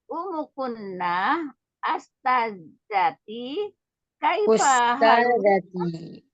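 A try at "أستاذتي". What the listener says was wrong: Ustadzati. Hamzanya fathah dhamma yang. Ustadzati.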